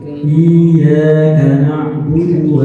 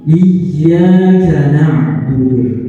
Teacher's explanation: Ada tekanan di bacaan huruf ya yang berharokat syiddah. Karena nanti dia untuk membedakan antara ya yang berharokat syiddah dengan ya yang berharokat sukun.